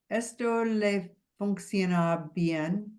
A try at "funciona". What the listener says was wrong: See, and there you wanna get that sh out. Funciona. Funciona. Funciona. It's really hard for English speakers to get the function out. Funciona. Le funciona bien.